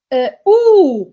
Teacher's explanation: Oo is a back, high, rounded, long vowel.